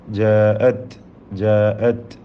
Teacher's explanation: തഇൻ്റെ ഹംസ് നഷ്ടപ്പെടാതെ ഉച്ചരിക്കുക